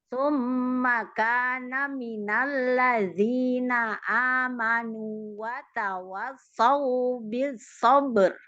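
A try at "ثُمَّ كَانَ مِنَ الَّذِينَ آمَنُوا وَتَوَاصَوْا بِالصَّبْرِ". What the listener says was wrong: Mim tasdidnya gunahnya panjangin lagi. Mim tasdid gunahnya guna akmal. Summa kana minal ladzina amanu wa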